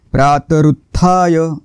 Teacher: प्रातृत्थाय रु वर थोडासा आघात येईल पुन्हा इथे वर थोडासा आघात येईल कारण जोडाक्षर आहे सर्व विघ्नात